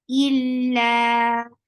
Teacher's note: The sound is very sharp, attached with lam. Lam will be 2 counts long because this is mad tabi'i. Illa, ain should be from your throat, but the sound is very short.